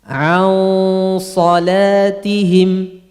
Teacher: Gunnah ikhfa'nya ditafkhimkan gara-gara setelahnya huruf tebal. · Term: gunnah ikhfa'nya juga mufakhamah